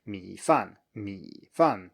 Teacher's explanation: just low and then falling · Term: low tone plus falling tone